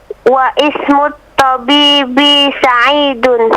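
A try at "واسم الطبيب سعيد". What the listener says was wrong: Bagaimana bacanya? Wa ismu. Bukan begitu, bacanya wasmu. Wasmut tabib. Jadi untuk kalimat ismu, alifnya itu ketika di tengah tidak dibaca. Nah, jadi ketika ada waw, wasmu, seakan-akan alifnya tidak ada. Seakan-akan dia tidak ada, tapi tulisannya tetap ada. Tapi tidak dibaca.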